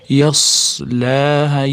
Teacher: Yas sotib chiqaramiz sukunini. Yas lahaa yasa bo'lib qalqala bo'lib ketmasin. Yas laa laadan keyin mana kichkina alif madd turibdi, cho'zamiz.